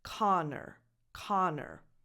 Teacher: pretend that there's only one N, Connor, Connor. Do you hear? I'm not saying a double N, Connor. And the last vowel is a schwa, so it's not an O again, Connor.